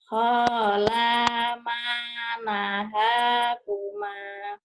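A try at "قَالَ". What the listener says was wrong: Bukan hola, Bu. Kola. Kola.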